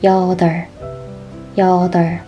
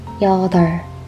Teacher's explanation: We remove the b sound.